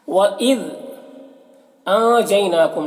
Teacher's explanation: نون میں اخفا ہو رہا ہے، نون کی آواز کو ناک میں چھپا کر پڑھیں گے۔ یا میں یا لین ہے، اسے نرم آواز کے ساتھ جلد پڑھیں گے۔